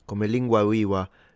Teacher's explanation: He does have the V pronounced as a W.